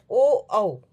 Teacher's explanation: ओ और औ जो है उनका कंठ जो उच्चारण स्थल है कंठोष्ठम कंठ और ओष्ठ दोनों है